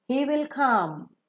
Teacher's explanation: when you say come you fall down because the sentence comes to an end